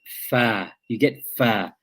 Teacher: from the inside of the lower lip, the wet part of the lower lip, the fa is pronounced with the edges of the upper incisors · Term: letter fa